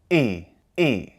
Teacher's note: the Hamza represents a glottal stop